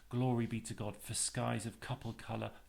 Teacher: And it's called sprung rhythm, and this is a term which Manley Hopkins developed, or he based much of his poetry on, and it's as if the beginning of the line is sprung by having a stress on the first line, on the first syllable